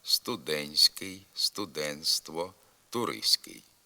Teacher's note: вимовляється звук т зникає при вимові в групах нтск нтст СК пишемо студентський студентство туристський а вимовляти треба студентський студентство туристський також